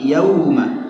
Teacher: Itu tidak gunnah ketika yauma ya. Bukan yauma ya, tapi yauma.